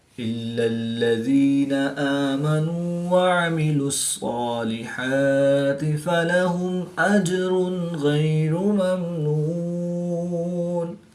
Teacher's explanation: میم ساکن کے بعد حرف با اور میم کے علاوہ حرف حمزہ ہے تو یہاں پر اظہار شفوی ہوگا، غنہ نہیں کریں گے بلکہ میم ساکن کو ظاہر کر کے پڑھیں گے · یا ساکن سے پہلے زیر ہے تو یا مدہ ایک الف یعنی 2 حرکات کے برابر کھینچ کر پڑھیں گے · جیم ساکن ہے تو یہاں پر قلقلہ صغریٰ کر کے پڑھیں گے